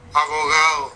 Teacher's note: tenemos la bilabial fricativa, sonora o aproximante. Ahí me suena más como fricativa. La O, o, la G, también me suena más como al oído, uno la clasificaría como fricativa.